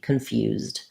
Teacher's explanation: says the z sound and the letter e makes no sound we go right from the z to a d